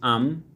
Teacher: মিম উচ্চারিত হয় ঠোঁটের বাইরের বা শুষ্ক অংশ থেকে, যেমন আম। ওয়াও এ হরফ উচ্চারণে দুই ঠোঁটে সরাসরি মিলিত হয় না, বরং উভয় ঠোঁট ডান ও বাম পাশ থেকে গোল হয়ে অর্ধফুটা ফুলের মতো মধ্যস্থলে ছিদ্র রেখে উচ্চারিত হয়, যেমন আও।